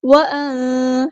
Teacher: نون ساکن کی آواز کو یہاں پہ چھپا دیں گے، اخفا ہوگا